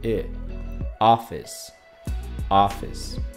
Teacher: El acento va al principio a office. Entonces el sonido e no va acentuado, es más corto.